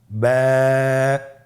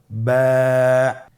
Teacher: বা হরফে টান হবে। এক আলিফ টান।